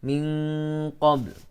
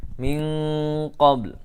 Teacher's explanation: baknya ada, jelas, ada pantulan, tapi ada bunyi lam juga walaupun tidak terlalu dominan, tidak terlalu jelas lamnya. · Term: raum